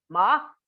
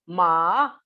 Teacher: tone 2 in Mandarin is high rising pitch, ma, and tone 3 is low dipping pitch, which is also rising, but falling and rising.